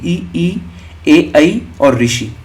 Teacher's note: आपकी जीभ आगे जा रही थी, राइट, लगभग दांतों को टच कर रही थी